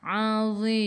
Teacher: Matikan dengan huruf mim, tutup mulut, rapatkan bibir. · Zadhi hujung lidah keluar sikit sahaja pada gigi depan.